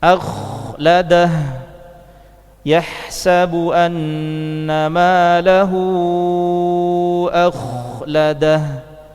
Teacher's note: rakhawah ini memberikan kadar mengalir pada kha yaitu satu harokat.